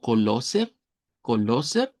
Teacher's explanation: si lo leemos como e r al final y decimos algo como coloser, coloser sería más acento austríaco, ¿verdad? Ya debemos de ir tomando en cuenta que cuando algo termina con er, el alemán estándar no utiliza el sonido de la R.